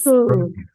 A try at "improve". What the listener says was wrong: Ya, jangan lupa ya, ini bukan F, tapi ini V. Jadi lower lip Anda yang berperan besar. Improve. Jangan improve. Jangan terlalu mantep F-nya.